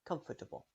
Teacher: So you might hear some people pronounce comfortable with a direct link from the F to T. Or you might hear some people pronounce a short schwa sound in between